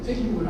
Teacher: feiura, ó. Tônica na penúltima sílaba, portanto é uma palavra paroxítona.